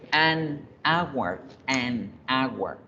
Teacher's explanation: en inglés la hora, al igual que en español, esa H no suena.